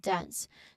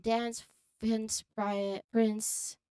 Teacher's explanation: It's a continuous flow of air from the nasal end to the S sound. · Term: NS cluster